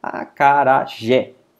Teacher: nós temos o jé, que é mais forte, é mais aberto, a gente coloca mais força e por isso ele acaba recebendo acento.